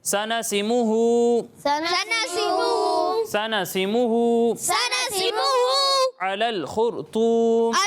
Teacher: یہاں خا کو بھی پر پڑھنا ہے، را کو بھی پر پڑھنا ہے اور طا کو بھی پر پڑھنا ہے